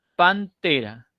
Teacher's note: La N, que originalmente era alveolar, se ha hecho dental, se ha dentalizado. ¿Por qué? Porque el siguiente elemento es una dental, la T.